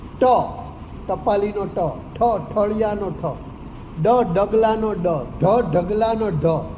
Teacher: આ પાંચ મૂર્ધન્ય વ્યંજનો છે એ મૂર્ધાને સ્પર્શે છે